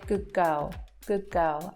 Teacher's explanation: the D is actually changing to a G sound to match the next letter in the next word. So we don't say good girl, we tend to say good girl, good girl, and that connects the two together as well.